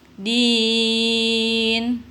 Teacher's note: ni-nya dimatikan ya karena wakaf, karena berhentinya di sini